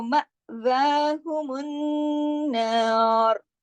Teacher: जब नून दो हैं तो जाहिर है गुन्ने भी दो होंगे, और जब दोनों गुन्ने मिलके बोले जाएंगे तो बड़ा गुन्ना बन जाएगा ना